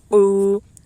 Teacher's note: واو ساکن سے پہلے پیش ہے اس لیے واو مدہ ہوگا، واو مدہ کو ایک الف کے برابر کھینچ کر پڑھیں